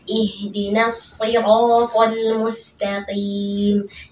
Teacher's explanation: huruf H ini hanya keluar dari pangkal tenggorokan ya. Huruf H ini adalah huruf yang paling lemah ya, huruf tipis ya dari huruf-huruf yang lain.